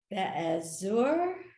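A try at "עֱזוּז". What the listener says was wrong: Those are two Zions actually in that word.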